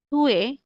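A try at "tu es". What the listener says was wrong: না নট টুয়ে, একটু সফট করে বললে হয়ে যাবে, চুয়ে, চুয়ে, টুয়ে, বলেন, চু সাউন্ড হবে, চুয়ে, হ্যাঁ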